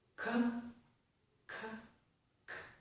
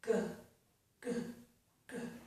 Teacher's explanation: Voiceless, voiced. Okay? So, back of tongue, soft palate. Those are stop plosives.